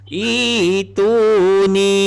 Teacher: Ni cara bacaan pada kalimah yang berbaris ialah menukar huruf hamzah yang kedua kepada huruf mat, iaitu berupa ya, menjadi itu ni. Ibdal. Namanya ialah ibdal.